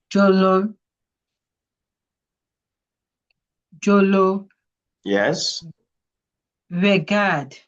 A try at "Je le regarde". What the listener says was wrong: Je le regarde. The E, there's no accent aigu there. Regarde, okay?